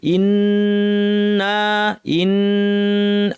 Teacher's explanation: নুন উপর চার্জ দিয়ে লম্বা গুন্না , এরপর একটা আলিফ আছে, এটাও টানতে হবে, দুইটাই টানতে হবে,